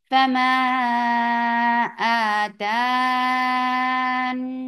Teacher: مدار للسکون کی طریقے سے، کیونکہ آپ نے نون کے اوپر جب سکون دے دیا تو یہ ٹیمپرری سکون has changed this 2 counts long vowel into 6